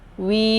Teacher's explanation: वाव खड़ी ज़ेर वी, होंठों से पढ़ना है वी, होंठों को गोल करके वी।